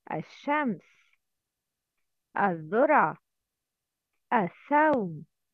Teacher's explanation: The second one, when we don't pronounce lam, it's lam shamsiya. Lam shamsiya, this lam is written. It's a written sound, but not pronounced.